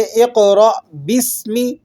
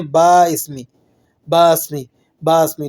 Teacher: تو اس میں الف نہیں پڑھا جائے گا، با سین سے مل جائے گا، ٹھیک ہے۔ بسمی، بی اسمی کر کے نہیں آپ اس کو پڑھیں گے۔